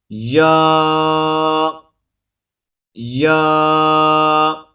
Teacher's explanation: زبان کے درمیان کو تالو کی طرف بلند کرتے ہوئے باریک آواز میں پڑھیں گے، ٹھیک ہے، یہ مخرج ہے اس کا۔